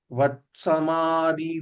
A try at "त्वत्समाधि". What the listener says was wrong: वत्समाधि சொல்ற வ வேண்டாம். त्व त्व त्वं त्व त्व त्व it and va त्व त्वं तत्त्वं त्व